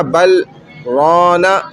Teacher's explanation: بل سانس نہیں توڑی، آواز رک گئی، رونا اسی سانس سے آگے پڑھا، جدھر سکتہ لکھا ہوا ہے قرآن میں۔